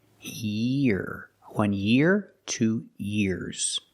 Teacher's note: make the long e sound connected to the r